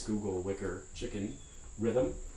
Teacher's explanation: it's hard to hear or to see a second vowel in words like this: Google, wicker, chicken, rhythm. If you look at these in an acoustic program, it's going to be hard to make out, there's clearly two syllables here. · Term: syllabic consonant